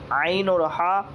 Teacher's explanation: दो हलक के बीच वाले हिस्से से निकलते हैं।